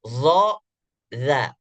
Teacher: sedangkan do dan dza itu desisnya bersamaan dengan suara maka tidak digolongkan ke dalam huruf Hamas · Tapi yang dimaksudkan adalah huruf-huruf hamas yang keluar desisnya saat dibaca adalah huruf-huruf yang hanya keluar desis saja tanpa didahului oleh suara. Sedangkan zo dan za itu desisnya bersamaan dengan suara, maka tidak digolongkan ke dalam huruf hamas. Zo, za. Walaupun secara praktik kita melihat kayaknya ada desis yang keluar.